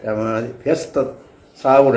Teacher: അവിടെ വിസർഗം സ ആയിട്ട് മാറി